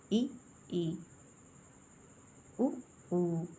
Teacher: वे स्वर जिनके उच्चारण में मुंह कम खुलता है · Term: संवृत